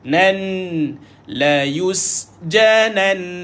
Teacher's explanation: Berhenti pada sabdu dia kena lama sikit. 2 harakat.